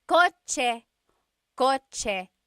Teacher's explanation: In the Tagalog alphabet, there is no letter C in Tagalog naturally occurring. The ch sound is a TS combination.